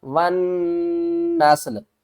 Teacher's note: نون کو سین کے ساتھ ملانا ہے اور سین بھی ساکن، آگے لام کو بھی ساکن کرنا ہے